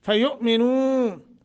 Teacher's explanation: حمزہ ساکن ہے جھٹکا دے کے پڑھیں گے